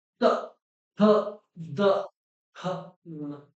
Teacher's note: आप इन्हें बोलेंगे तो आपकी जीभ को दांतों से टकराना ही पड़ेगा।